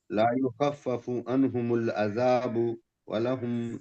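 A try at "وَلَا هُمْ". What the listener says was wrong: یہ ولا ہے. اب یہاں پہ لا پڑھ رہے ہو، پہلے لا، اور یہاں ولہم کر دیتے ہیں.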